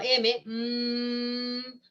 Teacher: primero hay obstrucción en la cavidad oral hay obstrucción el aire sale por la nariz y obviamente esta obstrucción de la boca se rompe y hay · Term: sonidos nasales